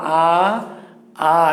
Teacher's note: জিহ্বার উচ্চতার ভিত্তিতে জিহ্বা যখন উপরে ওঠে উচ্চ স্বর ই উ বলতে গিয়ে জিহ্বা উপরে ওঠে, আ বলতে গিয়ে জিহ্বাটা নিচের দিকে চেপে রাখতে হয়